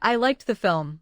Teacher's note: Liked ends with the letter E in its base spelling, but like finishes with K. Therefore, liked uses the T sound.